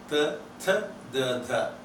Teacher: ta, tha, da, dha are all the four sounds laminal. Tip is not touching. It is a little behind the tip. And then it is dental.